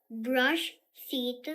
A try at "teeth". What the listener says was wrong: Oh, feet. It's not feet. Teeth. Ta-ta-ta. Teeth.